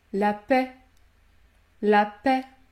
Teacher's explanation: Les lettres AI vont produire un son plus fermé lorsqu'elles se situent devant une consonne muette